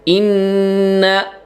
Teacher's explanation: inna gunnah musyaddad ditahan ya, 3 ketukan